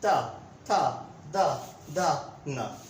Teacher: हमारी जीभ दांतों को स्पर्श कर रही है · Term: दंतीय व्यंजन